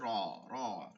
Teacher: জিহ্বাটা একটু ঘুরে গিয়ে তালুতে লাগছে, উচ্চারণ হয়েছে র, র, রেফ র, কোনো ভাইব্রেশন করা যাবে না, র পড়তে হবে, র।